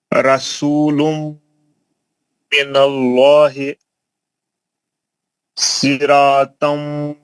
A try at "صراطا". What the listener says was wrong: سرا موٹا. ناک سے آواز نکالو. آپ کی آواز غائب ہو جا رہی. غننے کی آواز سنے نہیں آ رہی. ناک سے آواز نکالو.